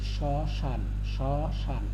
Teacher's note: এখানে নাসিক্য বর্ণ উচ্চারণ হচ্ছে না, এই জন্য চন্দ্রবিন্দু হয়েছে। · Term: মফলার উচ্চারণ হয় নাই